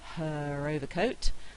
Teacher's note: I'm likely to say the R because the next word begins with a vowel sound. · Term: linking R